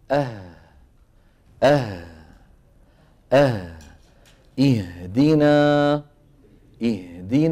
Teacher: الوترين الصوتيين وتخرج المتحركه بايه بتباع بالعكس الهاء تخرج بانفتاحه الجزئي الهاء تخرج بانفتاح الوترين انفتاحا جزئيا